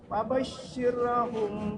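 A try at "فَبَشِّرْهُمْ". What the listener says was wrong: Ulang, rohnya jangan dipantulkan dan ditahan. Fabashshirhum jangan dipantulkan, Pak, bukan. Fabashshirhum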